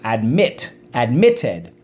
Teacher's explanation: consonant at the end or at the the second syllable and the accent is on the second syllable